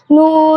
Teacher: 9 নম্বর মাখরাজ জিহ্বার আগা তার বরাবর উপরে তালুর সঙ্গে লাগাইয়া নুন উচ্চারিত হয়